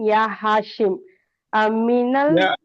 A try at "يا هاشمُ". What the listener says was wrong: نہیں بیٹا دیکھیے، یا ہاشم بول کے نہیں رکنا. میں کیا بولا آپ کو، یا جب آتا ہے تو اس کے بعد کے حرف پر پیش دیتے ہیں، یا ہاشم. میں بول رہا ہوں ہر لفظ کو ادا کرنا، تبھی آپ کو سیکھنے میں آئے گا. آدھا آدھا مت بولیے، ہر لفظ کا ہر حرکت کو ادا کرنا ہے.